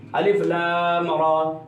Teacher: را کو تھوڑا سا لمبا کریں گے